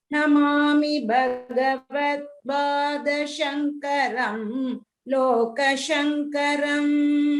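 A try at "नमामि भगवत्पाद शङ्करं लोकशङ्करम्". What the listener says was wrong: Bhagavat Pada, Bha, the Mahaprana should be clearer.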